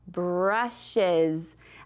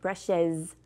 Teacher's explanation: When I have this es, it almost sounds a little bit like a z.